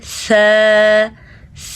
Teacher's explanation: اگلا حرف ہے س۔ س زبان کی نوک دونوں دانتوں کے درمیان میں جب آتی ہے، سامنے والے دونوں اوپر کے دانت اور دو نیچے کے دانت، ان کے درمیان میں جب آتی ہے تو س ادا ہوتا ہے۔